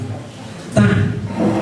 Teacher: Ta ini ada sifat Hames Hames itu keluarnya nafas keluarnya naas jadi ketika membaca ta itu harus banyak nafas yang keluar